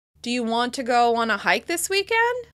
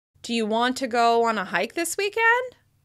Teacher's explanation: we use rising intonation on yes-no questions, and this is because it signals that we're checking or confirming information